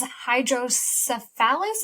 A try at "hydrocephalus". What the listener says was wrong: So close. Wrong emphasis on the syllable there. It's hydrocephalus. You were close.